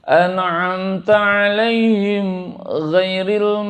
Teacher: perhatikan di ainnya ya an-nya harus izhar ainnya harus jelas